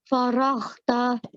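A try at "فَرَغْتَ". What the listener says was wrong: Try and make that ghain sound rather than a kha. Faraghta. Ta. Sometimes a ghain letter is hard to pronounce because we're not really used to pronouncing that and making that sound. So just practice that ghain sound.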